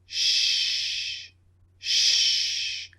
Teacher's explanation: So same shape of the lips, protruding, shh. The tip of the tongue comes up slightly, and you push air out of the mouth. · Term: unvoiced